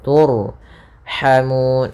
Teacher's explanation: Di sini ra-nya ra tebal, turhamun, ha kecil.